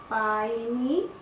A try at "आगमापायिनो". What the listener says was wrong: पाई, नो है कि नी है? हाँ, नो।